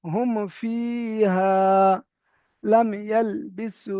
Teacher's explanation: এবারে একদম শেষেরটার সংজ্ঞা লক্ষ্য করেন শেষের মিম সাকিনের পরে যদি মিম আর বা ছাড়া মিম সাকিনের পরে যদি মিম আর বা ছাড়া অন্য অক্ষর অন্য যে 27টা আর অক্ষর আছে ওই অক্ষরের মধ্যে কোন একটি অক্ষর আসে তাহলে মিম সাকিনকে বিনা গুন্নায় জাহির করে পড়তে হবে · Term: ইজহারে সাফাবি